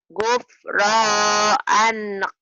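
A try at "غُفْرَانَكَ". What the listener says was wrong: Bukan. Alifnya itu pemanjang. Gufronaka. Gufronaka. Gufronaka. Iya, tapi ini bukan anak. Ini barisnya bukan punya alif. Ini punya nun. Gufronaka.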